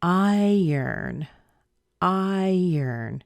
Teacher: Doesn't it sound like the R is towards the end instead of in the beginning? It actually sounds like I.